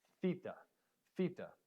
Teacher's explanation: this is a harder th and so you're putting your your teeth on the end of your tongue and pushing air through